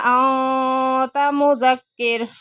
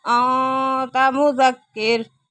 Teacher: انت نون ساکن کے بعد تا آ گیا، اخفا ہو رہا ہے۔